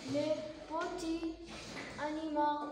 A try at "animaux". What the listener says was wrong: Ani. Ani. Regarde comment on le prononce AU. Ani. Ani.